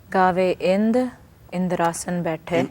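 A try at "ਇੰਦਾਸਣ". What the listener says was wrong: Indasan. Indasan. Indra da asana. In Raras, you say Indrasan. In Japji is Indasan. Meaning is the same, but the little difference pronunciation.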